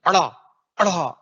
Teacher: इनको बोलते समय जीभ को पलट के झटके से नीचे लाना है, फेंकना है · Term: उच्छिष्ट